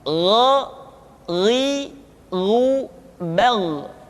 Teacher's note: Yang membedakannya adalah Kha mengalir nafas dan Gha tidak mengalir nafas.